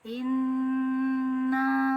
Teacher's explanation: untuk hamzah ini dia keluar dari tenggorokan bagian bawah, sedangkan untuk ain ini keluar dari tenggorokan bagian tengah.